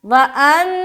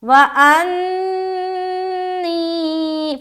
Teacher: حمزہ نون زبر ان اور نون یا زیر نی، انی، اب نون کے اوپر شد ہے نا تو نون مشدد کا غنہ کرنا ہے